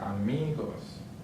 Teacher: so the stress syllable is on the second to last. So right here, amigos.